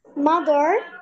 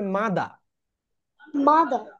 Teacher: আরটাকে তারা বাদ দিয়ে দেয়, ওমিট করে দেয় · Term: British sound R